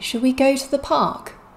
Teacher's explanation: we're stressing here go because it's a main verb and park because it's a noun